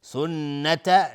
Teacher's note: سنت نون مشدد دو حرکت غنه میدیم